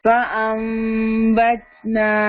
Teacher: نون ساکن کے بعد اپ کمنگ لیٹر با آ گیا ہے, اقلاب ہوا, نون کا ساؤنڈ میم سے بدل گیا, اس لیے یہاں پہ اسمال میم لکھا ہوا ہے.